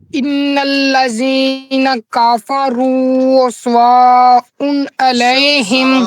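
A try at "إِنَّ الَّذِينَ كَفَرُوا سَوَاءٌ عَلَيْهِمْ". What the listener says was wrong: بیٹا واو کو واضح کریں لفظ واو بولے واو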